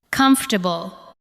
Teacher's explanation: Do not give every syllable the same weight. Let the first part carry the stress.